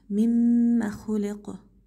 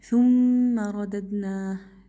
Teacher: وانا عمالي عم بشد على الميم بمقدار غنتها حركتين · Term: الميم المشددة